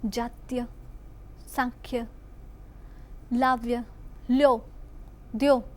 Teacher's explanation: કેટલાક શબ્દોના ઉચ્ચારમાં ગુજરાતના કેટલાક ભાગોમાં ય શ્રુતિ થાય છે.